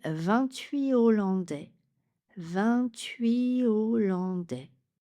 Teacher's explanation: Il s'agit donc d'un H aspiré ou H disjonctif. Pas de liaison.